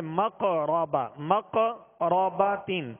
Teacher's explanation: زال کے آگے الف مدہ ہے، الف مدہ کو ایک الف کی مقدار کھینچ کر ادا کریں گے. قاف ساکن ہے اور قاف حروف قلقلہ میں سے، لہذا یہاں قلقلہ کریں گے